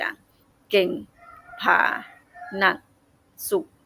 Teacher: ระดับเสียงก็ต่ำสุดมีเสียงคงที่สม่ำเสมอ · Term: เสียงเอก